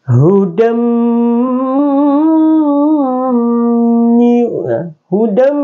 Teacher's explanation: dibaca dengan didengungkan, dia diidghamkan dan didengungkan